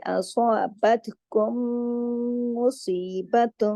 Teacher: صاد کو موٹا پڑھا جائے گا، باقی تمام حروف باریک ہیں سوائے صاد کے